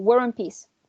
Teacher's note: So the R is already there, it is just helping us and linking the following sound because it starts with a vowel.